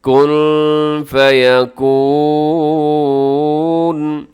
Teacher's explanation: نون ساکن ہے، نون ساکن کے بعد فا ہے. اب یہاں اخفا کیجیے گا.